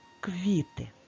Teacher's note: на якому складі стоїть наголос на першому складі перший склад наголошений